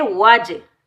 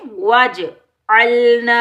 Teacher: जीम साकिन हरूफे कलकला के 5 word में से आ रहा है, तो जीम साकिन पर हम कलकला करेंगे। जब हम कलकला करेंगे डबल साउंड आएगा, टकराव पैदा होगा।